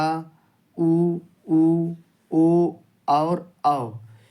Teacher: जो वर्ण जीभ के पीछे वाले हिस्से से बोले जाते हैं उन्हें कहते हैं पश्च स्वर